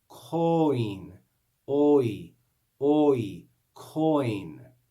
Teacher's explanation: we can hear the sound of the O and the I joined together. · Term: diphthong